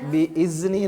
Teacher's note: ذال جو ہے اس کو نرمی کے ساتھ پڑھیں گے، بِإِذْنِ اگر تھوڑی سی سختی کریں گے تو وہ زا کی آواز پیدا ہو جائے گی